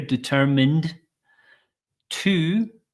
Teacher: So we have a D sound at the end here, determined to. Again, to is going to be reduced to t